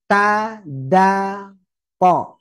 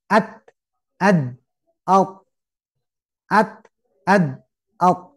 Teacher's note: ujung lidah menekan pangkal gigi seri atas. Tiga-tiganya sama ya, menekan.